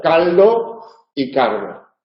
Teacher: en posición implosiva se confunden la L y la r y en determinados dialectos se pronuncia igual caldo y Cardo